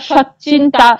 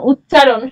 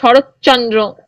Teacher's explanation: দুটো বিষম ধ্বনি একটাই ধ্বনিতে পরিণত হচ্ছে, ত ধ্বনির প্রভাবে চ ধ্বনির প্রভাবে ত ধ্বনি রূপান্তরিত হয়ে একই রকম ধ্বনি চয়ে পরিণত হচ্ছে। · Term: সমীভবন